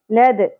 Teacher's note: दाल साकिन पे कलकला होगा